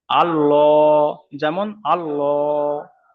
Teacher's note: আল্লাহর লামকে পুর, অর্থাৎ ল করে পড়তে হবে।